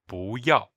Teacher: with the tone change rule, it's actually pronounced second tone, fourth tone